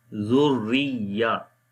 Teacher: fatha or dhamma come on the ra, so we read ra in heavy sound. If kasra come, we read light. So we say Zurriya.